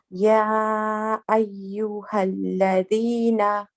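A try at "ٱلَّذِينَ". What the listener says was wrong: We can be a little bit lighter with the noon at the end. Alladhina.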